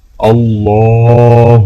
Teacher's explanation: اللہ کے لام کو موٹا پڑھا جائے گا۔ اللہ، لا الہ، لام کو الف کے ساتھ ملاتے ہوئے لام کو کھینچ کر پڑھا جائے گا، اور الہ کے لام کے اوپر کھڑا زبر ہے تو یہاں پر بھی لام کو ایک الف کے برابر کھینچا جائے گا۔